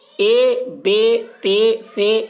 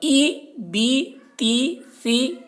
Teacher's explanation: مجہول اس طریقے سے حمزہ زیر اے، با زیر بے، تا زیر تے، ثا زیر سے، یہ مجہول ہو گیا۔ اے بے تے سے، یہ مجہول ہو گیا، اور ای بی تی سی، یہ معروف ہوا۔ تو معروف پڑھنا ہے، مجہول نہیں پڑھنا ہے، ٹھیک ہے۔